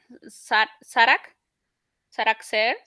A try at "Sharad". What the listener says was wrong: Sarad, Sarad, the, not car. No car. Sharad, not K. Sharad, Sarad.